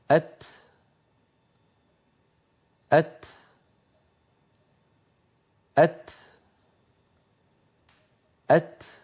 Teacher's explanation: اللسان يبقى قليلا إلى أن ينقطع الصوت ثم ينزل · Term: تاء ساكنة